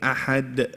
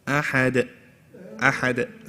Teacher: when we're stopping on the dal, what we have to do is ensuring that we let go of it straight away without doing shadda. So instead of saying ahad, no, ahad, ahad, straight away let go.